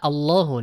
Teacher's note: Allahu ini dia dibaca tebal ya